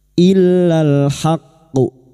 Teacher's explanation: karena kita memilih waqaf di sini, maka haqqu ini kita pantulkan dengan kuat. Illal haqqu, masuk dulu baru kita pantulkan dengan kuat.